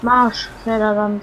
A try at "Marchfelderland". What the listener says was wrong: Nein, Marsch. Ist kein S drin. Das ist bei mir Marsch. Das kommt nämlich aus dem Österreichischen. Und die werden da nicht Sch.